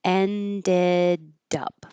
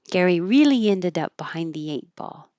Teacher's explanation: So if it helps, ended up, that D will connect.